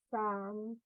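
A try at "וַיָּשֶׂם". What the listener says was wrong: Not some, 2 dots.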